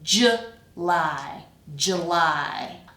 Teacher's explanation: So I'm just because that first syllable is the weak one, I'm just taking that oo and kind of reducing it to schwa.